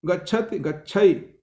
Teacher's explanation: स्वरों में मध्यवर्ती अल्प प्राण स्पर्श लुप्त हो गए